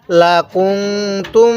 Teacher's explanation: এই নুন সাকিনের মধ্যে আমরা গুনাহ করব